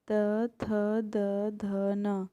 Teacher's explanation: त, थ, द, ध, न, इनका उच्चारण स्थान दंत्य है।